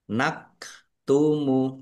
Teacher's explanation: Ini kaf sukun nak tumu ya jangan keliru hamzah atau ain